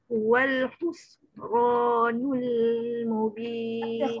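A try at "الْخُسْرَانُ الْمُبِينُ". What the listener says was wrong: Huruf kha tu, khus bunyi kha. Dia bukan hus. Kalau kita baca hus dia jadi ha. Dia kha tu, khus.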